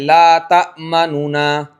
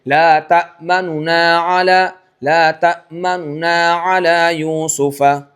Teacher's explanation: आपको पता चले कि हां पेश की तरफ गया और हरकत नू ये मुकम्मल हरकत मुकम्मल नहीं अदा होनी चाहिए बिल्कुल हल्की सी तिहाई हरकत वन बाय थर्ड हिस्सा अदा होना चाहिए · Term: रोम